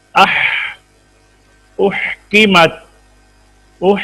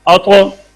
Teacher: आवाज पस्त है और सांस जारी है, जितनी देर चाहे जारी रख लें, जितनी देर चाहे जारी रख सकें ना। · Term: हमस